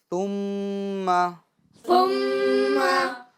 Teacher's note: جب ہم ادا کریں گے ثا کو تو اس طریقے سے ادا کریں گے کہ اس کے اندر سین کی آواز پیدا نہ ہونے پائے